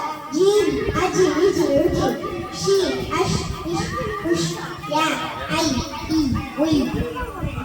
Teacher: நாவின் நடுப்பகுதி மேல் முரசை கொடும் பொழுது ஒலிக்கப்பெறுகின்றது.